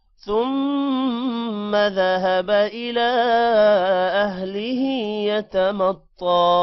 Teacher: مطا تو کو موٹا کریں گے